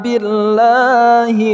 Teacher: lafaz Allah kita baca secara tipis karena huruf sebelumnya berharakat kasrah